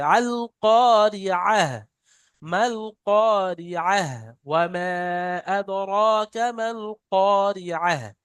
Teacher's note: আইনটা উচ্চারণ হয় গলার মাঝখান থেকে, কন্ট্রোলের মাঝখান থেকে।